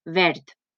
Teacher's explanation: Pareix que ho diga amb una T, però en realitat s'escriu amb una D. I això no significa que ho pronunciem malament, és que les dues pronúncies són la mateixa quan van a final de síl·laba.